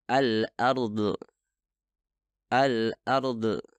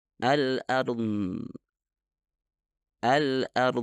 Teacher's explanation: suara Dod tidak dihasilkan dengan mengeluarkan udara itu bukan suara yang meledak melainkan dihasilkan ketika udara terbentuk di belakang lidah melepaskan udara ketika · ketika berhubungan dengan huruf DD kesalahannya terdengar seperti ini alard alard bagian terakhir dari suara itu adalah qqalah atau pelepasan udara yang seharusnya tidak terjadi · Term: Qalqalah